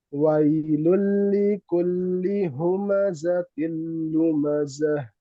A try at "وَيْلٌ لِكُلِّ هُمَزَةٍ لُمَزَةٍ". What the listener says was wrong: Nah, domanya sempurnakan ya. Wailul likulli humazatil lumazah.